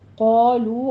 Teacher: قالو الف مدہ واو مدہ، قا میں الف اور قاف دونوں پر پڑے جائیں گے، لو میں واو مدہ ہے، دونوں ہونٹوں کو گول کرتے ہوئے ادا کیجیے